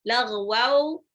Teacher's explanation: itu ghain ya, ghain agak ngorok